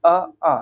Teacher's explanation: कंठ, देखिए बोलकर देखेंगे आ, तो कंठ का प्रयोग हो रहा है यहाँ पर। उच्चारण स्थान की दृष्टि से कंठ है, अ और आ